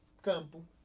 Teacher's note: uma letra que indica a nasalização do A. O som sai pela boca e pelo nariz, indicando que esse A tem um tio.